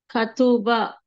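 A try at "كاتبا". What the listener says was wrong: కా మీద గీత ఉండి మళ్ళీ అలిఫ్ వచ్చింది అంటే దీర్ఘం రావాలి కదా.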